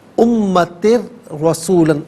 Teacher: یہاں را ساکن ہے، را ساکن سے پہلے 2 زیر کی تنوین ہے، تو امتر یہاں پر ناظرین جب را ساکن کریں گے تو اسے باریک پڑھیں گے، پھر رسولاً، پھر جب ہم پڑھیں گے را تو اس پر زبر ہوگا، تو اس صورت میں ناظرین را کو پر کر کے پڑھا جائے گا